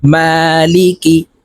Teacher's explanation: মিমের উপরে খারা জবর আছে তো এই মিমকে এক আলিফ টেনে পড়বো